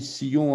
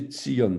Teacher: Quand on dit Sion en français, en fait, il faut prononcer Tzion, T-S.